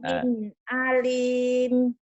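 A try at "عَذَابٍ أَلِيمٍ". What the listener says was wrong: bi'adzabin alim, jangan alim ya, jangan ain, alim.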